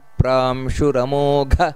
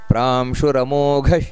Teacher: ಉಪೇಂದ್ರೋ ವಾಮನಃ ಪ್ರಾಂಶುರಮೋಘ. ನೋಡಿ, ಘ ಅನ್ನೋದು ಮಹಾಪ್ರಾಣ. ಅಮೋಘ ಘ ಹಕಾರ ಬರಬೇಕು ಕಡೆಗೆ.